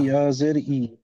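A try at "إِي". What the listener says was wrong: একটু টান দিয়ে পড়তে হবে, হ্যাঁ। হামজা ইয়া জের ই, বা ইয়া জের বি, এইভাবে।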